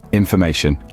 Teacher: the third syllable ma is where the stress Falls